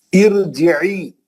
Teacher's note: یہ عارضی زیر را کو پتلا نہیں کر سکتی، یہ را موٹی پڑ جائے گی